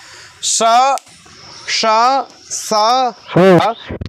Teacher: ऊष्म क्यों है ये, क्योंकि इनमें ज़्यादा हवा निकलती है, और हवा स्वाभाविक रूप से मुंह से जो सांस निकलती है वो कैसी होती है, गर्म होती है, ठीक है। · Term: ऊष्म वर्ण